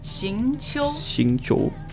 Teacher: Second tone and then first tone.